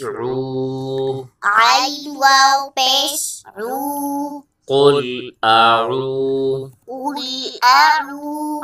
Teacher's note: آگے واو مدہ ہے، ایک الف کی مقدار کھینچ کے پڑھیں گے